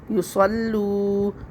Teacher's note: ایک الف برابر کھینچنا ہے اس کو، واو مدہ ہے، واو ساکن سے پہلے پیش ہے، واو مدہ ہے، اس کو ایک الف برابر کھینچ لیں گے.